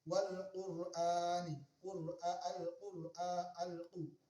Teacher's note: Alif lam qamariyah, alif lam, lamnya tersebut dibaca sukun atau jelas suara lam sukunnya.